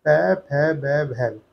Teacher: इन शब्दों को बोलने के लिए हमारे दोनों होंठ आपस में स्पर्श होते हैं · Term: ओष्ठक वर्ग